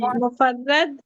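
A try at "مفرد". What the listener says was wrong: हाँ, मुफर्रद नहीं है, रा सुकून नहीं है, मुफरद। मुफरद, ये देखिए, है, फा है, रा है और दाल है, मुफरद। मुफरद।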